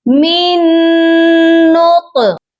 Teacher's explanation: جب بھی آپ دیکھیں کہ 2 حروف اکٹھے ہیں ساکن اور مشدد، تو ساکن کو آپ نے چھوڑ دینا ہے۔ میم کو نون مشدد کے ساتھ ملائیں گے اور غنہ بھی کریں گے، کیونکہ نون مشدد پر ہمیشہ غنہ ہوتا ہے۔